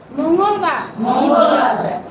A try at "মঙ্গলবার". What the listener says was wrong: আচ্ছা মুনা মো, মঙ্গল, মুনা, হ্যাঁ, ময়ের রস্যু না, ময়ে ও এর মতো উচ্চারণ হবে, হ্যাঁ, মঙ্গল, ঠিক আছে, মঙ্গল, মঙ্গল না, আবারও বলি, ময়ের রস্যুকারের মতো উচ্চারণ হবে না, ময়ে ওকারের মতো উচ্চারণ, মঙ্গলবার, বলেন দ না, কিন্তু ধ, বুধবার, কিন্তু আমরা বুধবারই বলি বেশি, তাড়াতাড়ি বলতে গেলে বুধবারই বলি।